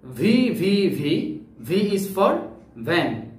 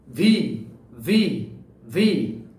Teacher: তারপরে ভি, ভি হচ্ছে এটাও কিন্তু দাঁতের সাথে, উপরের দাঁতের সাথে নিচের ঠোঁট, তবে এই ক্ষেত্রে বাতাসটা একটু ধাক্কা খাবে, নিচে জুড়ে সজোরে বের হবে।